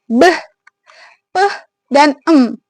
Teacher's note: Bilabial adalah kedua bibir. Jadi bunyi konsonan bilabial ini itu dihasilkan dari bibir bawah sebagai alat artikulator aktif bertemu dengan bibir atas. Jadi jadi bibir ini dia menutup lalu dilepaskan.